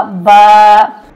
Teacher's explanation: एक अलिफ के बराबर खींचा जाएगा, क्योंकि यहाँ पर है अलिफ मद्दा